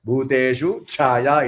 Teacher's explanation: Join both Bhuteshu Chaya. Don't say, you should not give a breath there.